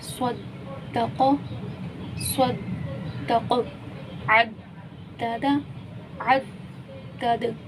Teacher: دال پہ بھی کلکلا ہو رہا ہے کیونکہ حرف کلکلا میں سے ہیں، اور وقف کی صورت میں یہ ساکن ہو گیا